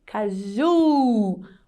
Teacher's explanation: Agora, se a última sílaba for mais forte, aí sim, nós usamos a letra U, como, por exemplo, na palavra caju, caju, Então, a última sílaba é mais forte